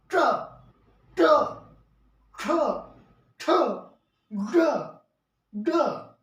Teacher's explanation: हमारे जीभ है वो पीछे की ओर जाते हैं, जो तालु है उससे पीछे चला जाता है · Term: मूर्धन्य